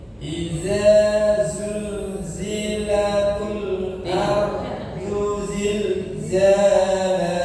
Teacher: ardu pendek, zilzalah panjang za ya